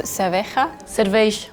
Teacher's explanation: So whenever I hear sh sound very strong, I'm like, that's Portuguese.